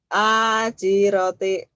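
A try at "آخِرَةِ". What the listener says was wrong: Titiknya di atas. Ajiroti aja. Akhiroti bukan ajiroti. Kho itu.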